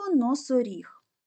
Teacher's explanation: третій склад буде наголошений тепер дітки робимо звуковий аналіз цього слова перший звук н твердий приголосний позначаємо однією рисочкою другий звук о голосний ненаголошений позначаємо кружечком наступний звук с твердий